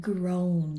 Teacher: Um it's also called vowel diagraphs and that's where we have two vowels side by side in a word and the first one saying the long vowel sound and the second one's just sitting there silently like in the word groan. you hear the long O sound, but the A is just sitting there silent